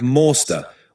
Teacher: In an American accent, it usually sounds more like master, with that R sound more pronounced and the A more open. So where I'd say master with a lighter R, Americans tend to give it a bit more emphasis.